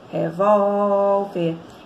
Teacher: E aí a sílaba tônica está na penúltima.